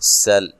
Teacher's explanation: سین کو باریک سیٹی سے، لام کو ہلانا نہیں ہے، جس طرح کہ اس سے پہلے بھی آپ کو بارہا بتایا جا چکا ہے کہ صرف حروف قلقلہ کو حالت جزم میں ہلایا جاتا ہے، اس کے علاوہ کسی بھی حرف کو ہلانا نہیں ہے۔